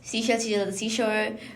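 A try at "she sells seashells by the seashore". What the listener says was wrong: Not that fast, like at least you can understand that fast.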